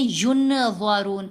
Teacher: نون ظاہر ہو گئی، نون کی آواز بہت کلیئر سب کو سنائی دی